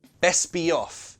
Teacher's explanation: Off, we're gonna connect it with a y sound.